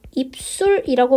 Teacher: 입술이 되는 이유는 앞에 있는 비읍 때문에 뒤에 있는 시옷이 쌍시옷이 됐습니다. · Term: 된소리